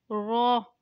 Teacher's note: रो जुबान की नोक और मुकाबिल के तालू से अदा होता है